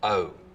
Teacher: pretty significant goat fronting again